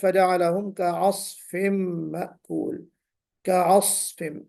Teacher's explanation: صاد میں ہلکی سی سیٹی بجنی چاہیے، صفیر ہونا چاہیے، ٹھیک ہے۔ اور پھر اطلاق اور استعلاء کی وجہ سے صاد جو موٹا پڑھا جائے گا اس کا بھی بہرحال ہمیں خیال کرنا ہے۔